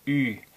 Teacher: The U with an umlaut over it, spelled UE, as in oo, approximately like ooh, but with puckered lips, ü. The sound is not in English.